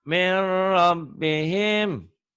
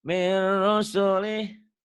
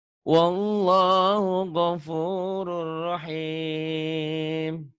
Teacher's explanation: nun mati atau tanwin apabila berhadapan dengan lam dan ro, dilebur, dimasukkan tapi tanpa dengung, tanpa ditahan.